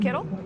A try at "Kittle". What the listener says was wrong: K is silent. The K is silent.